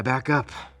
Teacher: sound from back is linked to the next vowel